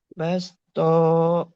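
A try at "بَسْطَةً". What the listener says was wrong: Bas. Bas. Tohnya pendek. Bas. Toh.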